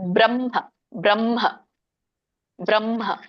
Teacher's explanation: ಇನ್ನೊಂದು ವ್ಯಂಜನ ಕೂಡಿರೋದ್ರಿಂದ ಇಲ್ಲಿ ಏನಾಗುತ್ತೆ ಅದು ಉರಸ್ಯದಿಂದ ಬರಬೇಕು ಗಂಟಲಿನಿಂದ ಬರಬಾರದು ಹಾಗಾಗಿ ಬ್ರಹ್ಮ ಅನ್ಬೇಕು ಫಸ್ಟ್ ಮ ಹೇಳಬೇಕು ಆಮೇಲೆ ಹ ಹೇಳಬೇಕು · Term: ಸಂಯುತ ಹಕಾರ